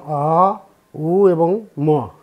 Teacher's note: এই অ, এটা হলো আমাদের কণ্ঠদেশ থেকে উৎপত্তি হয়। তারপরে উ দুই ওষ্ঠ, ম নাসিকাগ্র।